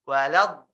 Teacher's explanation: waladdallin ini termasuk mad lazim ya. Yang mana kamu harus memanjangkannya 6 harokat